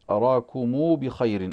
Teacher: ولكن الإمام ابن كثير له ضم ميم الجمع هكذا أراكم بخير